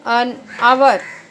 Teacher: So in the word hour, the H is silent, so we get the vowel sound of O first.